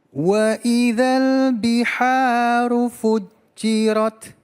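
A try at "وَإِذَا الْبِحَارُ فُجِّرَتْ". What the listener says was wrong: Masya Allah. Lanjut.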